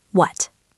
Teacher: if you just say what with a flat or falling intonation, it sounds incredibly aggressive. It sounds like you are angry or like you are challenging the person.